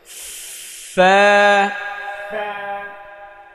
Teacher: এই ওপরের দাঁতের সামনের ওপরের দুই দাঁতের আগা নিচের ঠোঁটের পেটে লাগাতে হবে